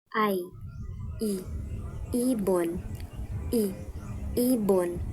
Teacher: Pangatlo ay ang patinig na I. Isang mataas at harap na patinig